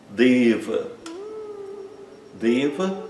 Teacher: Deva é um ser divino masculino como Chiva, como Vishno, como Ganexa, deva, né? O e fechado, longo e o a curto fechado